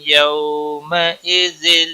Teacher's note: یو واولین ہے، ایک تھوڑا نرمی کے ساتھ کھینچ کر پڑھیں گے